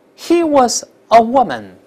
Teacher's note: 这▁woman▁重读一下就好了